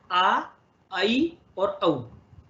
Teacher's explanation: आ जो है कंठ से बोला जाता है, ऐ कंठ और तालु से बोला जाता है, और औ कंठ और ओष्ठ से बोला जाता है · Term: वृद्धि